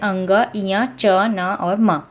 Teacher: इनके उच्चारण में वायु ध्वनि मुख के साथ-साथ नाक से भी निकलती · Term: अनुनासिक वर्ण